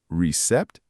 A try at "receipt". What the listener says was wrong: Close. Remember, the P is silent. It's receipt. Receipt.